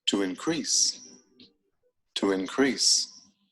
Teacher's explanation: notice the stress on the second syllable